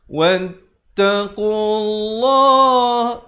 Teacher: Di sini dibacakan tebal lafzu jalalah.